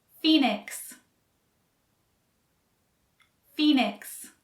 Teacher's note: Notice we don't really pronounce the O in Phoenix.